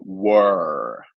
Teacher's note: American or some other accents in some other ways of speaking they would pronounce the r as almost a curved sound so were this is very very much an American accent